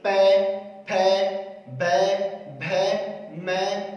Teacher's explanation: पै वर्ग यानी पे वर्ग का उच्चारण स्थान की बात करें हम जब बोल रहे हैं पे, फे, बे, भे, मैं, तो इस आधार पर इस पे वर्ग का उच्चारण कर रहे हैं तो हमारे होठ सर्वाधिक सक्रिय हो रहे हैं। अगर हमारे होठों को काट दिया जाए तो हम पे वर्ग का उच्चारण ठीक प्रकार से नहीं कर पाएंगे। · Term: ओस्टे